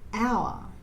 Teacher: when we say the word hour, we don't say the letter H, we say hour.